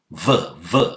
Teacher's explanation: You have to bite the lower lip with the upper teeth and blow out.